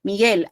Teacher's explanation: Miguel no tiene diptongo porque yo no escucho la u